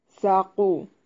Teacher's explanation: سا کو نرم اور قاف کو موٹا ادا کریں گے